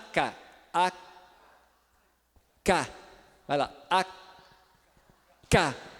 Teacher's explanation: ka&ka ela há cá onde aconteceu a obstrução à lá atrás é o dorso da língua a parte de trás da língua que subiu e tocou lá no final do palato e aí não deixou a passar a atacar e ele só